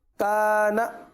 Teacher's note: इन्नहु गुन्ना भी करेंगे, उल्टा पेश है, इन्नहु खींच कर पढ़ेंगे। काना, काफ को खींचेंगे एक अलिफ तक, नून को नहीं खींचेंगे